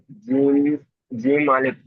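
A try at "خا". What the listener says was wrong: জিম নয়, জিম তো নিচে হলে জিম হতো, উপরে হলো খ।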